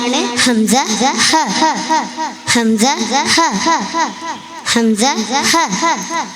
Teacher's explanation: തൊണ്ടയുടെ അടിഭാഗത്തുനിന്ന് വരുന്ന അക്ഷരങ്ങളാണ് ഹംസ ഹ